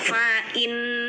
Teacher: nun bertasydid ini dengung, namanya gunnah. Setiap nun dan mim namanya gunnah, dengungkan.